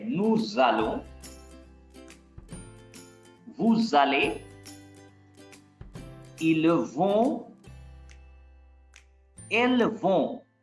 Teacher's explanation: Nous allons, because here you see this S. This S is pronounced as Z. And why? Because this S is placed between two vowels. Before S there is U, after S there is A.